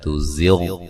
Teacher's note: غین کو موٹا ادا کرنا ہے لیکن ہلانا نہیں ہے